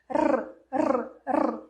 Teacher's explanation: essa ponta da língua você vai colocar atrás do dente e vai treinar essa vibração da língua, como se fosse uma moto. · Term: R vibrante